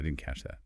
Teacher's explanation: Notice how the T sound in didn't almost disappear.